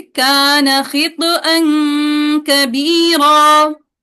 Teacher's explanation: हाँ, काना लंबा नहीं करेंगे, कान खितअन कबीरा।